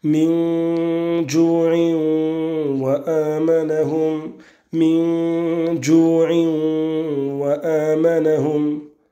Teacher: L'assimilation du tanwin pour la parole ju'in wa amanahum avec le waw juste après